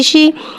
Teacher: شین کے نیچے زیر ہے, زیر کو نیچے گراتے ہوئے ادا کر کے پڑھیں گے. شین میں تفشی والی سیٹی کو ظاہر کر کے پڑھیں گے. شین زیر شی.